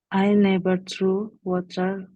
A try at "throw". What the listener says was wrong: Kalau throw itu pakai E. Ini kan pakai O. Jadi bacanya throw.